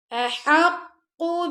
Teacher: اگر اس کو پڑھو احقو تو یہ لمبا ہو گیا نا قاف، تو یہ غلط ہے، ہمیں لمبا نہیں کرنا